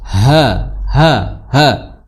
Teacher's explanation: ha di tenggorokan paling dalam